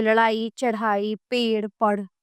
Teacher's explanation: इनके उच्चारण में जीभ को ऊपर उठाकर आगे की ओर विक्षिप्त किया जाता है। इसलिए इन्हें उत्क्षििप्तक ध्वनियां भी कहते हैं। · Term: उत्क्षिप्त ध्वनियां